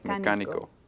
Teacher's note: So we want stress on the third to the last syllable